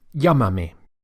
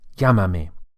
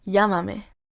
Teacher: the accent or the emphasis falls on the first syllable